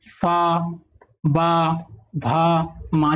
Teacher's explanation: इसमें आपका होंठ का प्रयोग हो रहा है, तो इसका उच्चारण स्थान क्या हो जाएगा, ओष्ठ हो जाएगा